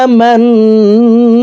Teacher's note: জবর ওয়ালা মিমটি তাসদিদ ওয়ালা নুনের সাথে 3 সেকেন্ড পরিমাণ গুন্নাহ করে পড়ব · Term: ওয়াজিব গুন্না